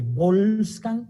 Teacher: volcán con esta oclusiva bilabial inicial B